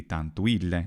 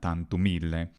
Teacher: A problem that a lot of the actors have is they don't know that final M is not to be pronounced as a clear consonant, creating a barbarism, something that non-native Latin speakers would do.